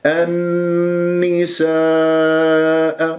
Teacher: اجتمع حرف المد والهمزه في كلمه النساء مد واجب متصل اربع خمس حركات